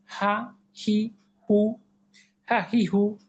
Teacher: উচ্চারণ স্থল হালক বা কণ্ঠের শুরু হতে হরফটি উচ্চারিত হয়। অবস্থা একই, ঠোঁট নড়বে না, যেহেতু গলার হরফ, ঠোঁটের কোনো ফাংশন নেই, গাল নাক ফুলবে না, কপাল ঘুষবে না।